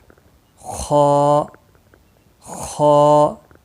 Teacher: یہ موٹا حرف ہے، مستعلیہ میں سے ہے، خا موٹا پڑا جائے گا